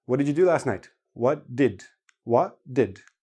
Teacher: if you listen to native speakers, hardly anybody actually pronounces the T.